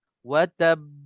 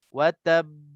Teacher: Dia lepas pada ta tu pendek, tapi untuk sebutkan ba tu kita lambat sikit. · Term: qalqalah kubra